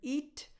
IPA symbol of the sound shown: i